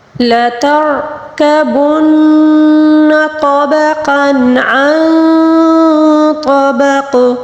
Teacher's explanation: را کو پر پڑھیں گے کیونکہ را ساکن سے پہلے والے حرف پر زبر ہے